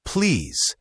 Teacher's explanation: The word please should have a clear Z sound at the end, not an S.